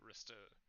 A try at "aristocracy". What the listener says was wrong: Yeah, but that's pronounced as aristocracy, not aritocracy.